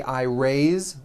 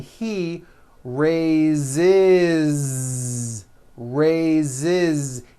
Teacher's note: even though it is spelled with an S, it's pronounced with a voiced Z.